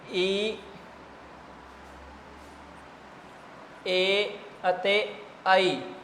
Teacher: ਤਾਂ ਜੀ ਜੀਭ ਦੇ ਅਗਲੇ ਹਿੱਸੇ ਤੋਂ ਬੋਲੇ ਜਾਂਦੇ ਹੈ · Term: ਅਗਲੇ ਸਵਰ